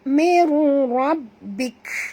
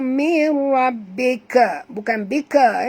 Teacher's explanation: bunyikan hamas pada kaf